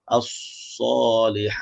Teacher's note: Huruf sad kena ada sofir